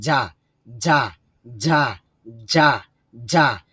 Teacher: উচ্চারণ হবে জিহ্বার মধ্যখান থেকে। যা, যা, যা, যা, যা, এবং জিহ্বা নড়াচড়া করবে। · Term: জিম